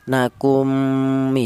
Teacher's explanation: mim yang pertama ini yang mati ini langsung menyatu ke huruf mim yang kedua ya. Nakumi, seperti itu. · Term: idgham misli